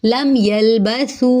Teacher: لم یلبثو، میم ساکن کے بعد یا ہے، یہاں پہ پھر ہم جو ہے وہ اظہار کریں گے، میم کی آواز کو ظاہر کریں گے۔ لم یلبثو، سو پہ بڑی مد ہے، ٹھیک ہے، کیونکہ دیکھیں واو مدہ اور حمزہ دو الگ الگ کلموں میں آ رہے ہیں تو بڑی مد ہو رہی ہے